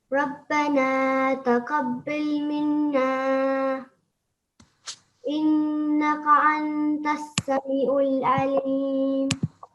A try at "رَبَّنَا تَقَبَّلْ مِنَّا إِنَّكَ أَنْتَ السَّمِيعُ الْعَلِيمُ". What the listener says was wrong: Okay, it was just, I wasn't sure if you said taqabbil or taqabbal, so just be a little bit clearer next time.